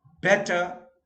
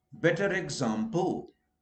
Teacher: So when you say better, you don't pronounce R. When you say better example, then R is heard.